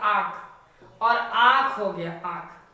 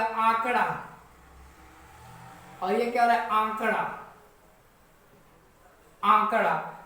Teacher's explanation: तो इसमें नाक का कहीं ना कहीं उच्चारण हो रहा है, इसलिए इसे अनुनासिक आती है।